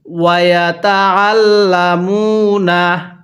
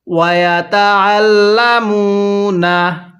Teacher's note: আইনটা গলার মধ্যে চাপ দিয়ে লামের সাথে লাগাবো, তাহলে ওয়ায়াতাআল্লামুনা।